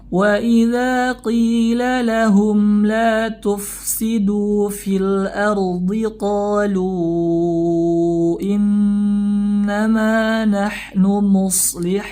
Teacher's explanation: ada Mad bertemu dengan Hamzah dalam dua kata maka terjadilah hukum Mad Jaiz munfasil dibaca 4 sampai 5 atau 5 harakat